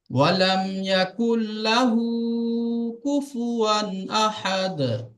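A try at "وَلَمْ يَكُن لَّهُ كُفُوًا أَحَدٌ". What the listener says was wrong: লামেতে টান দেবেন না।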